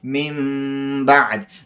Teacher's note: او اقلاب مو وویلې چې اقلاب کله چې نون ساکن یا تنوین نه شاته حرف د اقلاب یعنی با راشي هلته اقلاب کېږي، یعنی تغییر با بدلیږي، نون ساکن بدلیږي په میم باندې، او اخفا هم کېږي او غنام کېږي.